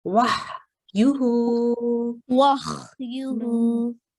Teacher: it's not coming from the top of your throat, so it's not h sound, but it's coming from the middle